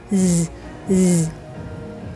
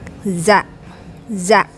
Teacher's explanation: Tiếp theo là âm giờ rung cổ lên